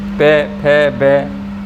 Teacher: ओष्ठ पे वर्ग का उच्चारण स्थान है, यानी हमारे होठों का प्रयोग होगा